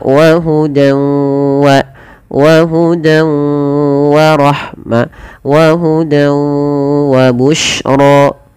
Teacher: Nah, di sini idgham bi gunnah juga bisa kita namakan dengan idgham naqis. Ya, idgham bi gunnah yang dia naqis, tidak sempurna diidghamkannya, masih menyisakan sedikit bunyi suara nun